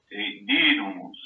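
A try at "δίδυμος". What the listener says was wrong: Bien, didumos. Exacto, ese sonido de la Y debe ser todavía más, se debe sentir más en ti. Recuerda que es como decir una U, es poner la boca para decir U, pero realmente pronuncio una I.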